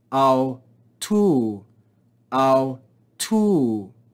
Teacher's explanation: Here we have another diphthong, omicron, upsilon, with a circumflex accent. So we're going to rise and fall on this second syllable.